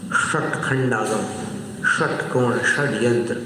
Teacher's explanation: मूर्धा का अर्थ सिर होता है, तो मूर्धा की ओर जीभ को करके फिर उच्चारित करते हैं तो इसको मूर्धन्य श बोलते हैं